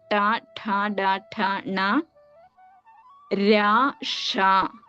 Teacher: നമ്മൾ ഉച്ചരിക്കുന്ന സമയത്ത് നാവ് മടക്കിയിട്ട് നേരെ മുകളിലേക്ക് വെക്കുകയാണെങ്കിൽ അതിനെ ആ ഒരു സ്ഥാനത്തിന് മൂർഥ എന്ന് പറയും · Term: മൂർധന്യം